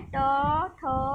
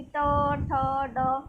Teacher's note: तालु के मूर्ध्रा भाग से, मूर्ध्रा भाग मतलब जैसे ये है ट, ठ, मतलब कि तालु, जैसे कि फर्स्ट वाले जो ऊपर वाला था वो तो तालु को टच कर रहा था, बट ये जो है मूर्धा भाग, मतलब कि टंग को आपके मोड़ते हुए ये टच करेंगे ताल को, कि ट, ठ, ड, मतलब कि मुड़ी हुई उसमें अवस्था में टच करते हैं, तो ये कहलाते हैं मूर्धन्य।